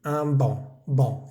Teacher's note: Esa C no se pronuncia. Y la AN es una vocal nasal, recordemos.